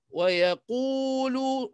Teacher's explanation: Wa yaqulu ma tabi'i qu dua harakat, lu dua harakat. Jadi qu ni ikut sifat qaf tebal. Yaqu tebal. Lu tipis.